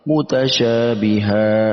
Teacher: ketika kita berhenti ataupun kita mewakafkan bacaan kita pada huruf yang mempunyai fathatain ya, maka harus dibaca panjang ya.